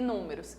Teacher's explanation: Números tem 1, 2, 3, 4 sílabas e números. E a sílaba mais forte é a antepenúltima.